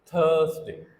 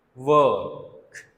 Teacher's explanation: तो आर को प्रोनाउंस करने की बजाय ये जो वॉल है उसे हम लॉन्गर बना देते हैं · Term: long vowel